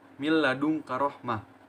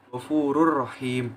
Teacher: Nah, sehingga dapat disimpulkan bahwa idgham bila gunah itu memasukkan huruf nun mati ataupun tanwin kepada huruf berikutnya tanpa adanya dengungan. Huruf idgham bila gunah itu ada 2, yaitu lam dan ro.